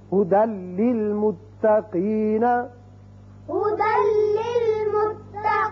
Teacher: دال کی ایک زبر لام سے ملے گی اور بغیر غننے کے پڑھا جائے گا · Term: ادغام بغیر غنہ